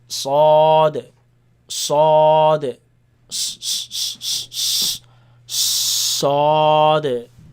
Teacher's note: The dal at the end you bounce